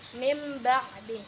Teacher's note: cara membacanya itu tidak terlalu kita rapatkan bibir kita agak ada seolah-olah satu kertas juga diselipkan di dalam antara bibir atas dan bibir bawah